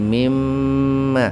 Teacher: Mimma itu asalnya min plus ma, itu nunnya dihilangkan diganti dengan tasdid jadi mimma